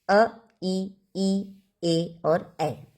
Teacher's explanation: अ वर्तुल जिसमें ओष्ठ जो है हमारा वो गोलाकार नहीं बनता